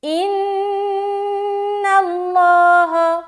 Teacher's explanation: اس نون کے اوپر شد ہے، تو یہاں پر ہم غنہ کریں گے جو کہ کہلاتی ہے نون مشدد کا غنہ۔